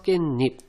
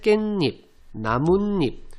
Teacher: 세 번째, 모음 앞에서 니은 소리가 덧납니다. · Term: 니은 소리가 덧나게